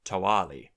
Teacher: since that w is no longer following an obstruent or in word initial position it would remain as a w